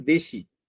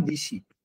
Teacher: যেমন ধরেন দেশি, মানে পরের ধ্বনিটা স্থির, পূর্বের ধ্বনি পরিবর্তিত হয়ে গেল। দেশিকে আমি বললাম দিশি, তাহলে দেখেন সিটা একই আছে, দেটা হয়ে গেছে দি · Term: পরাগত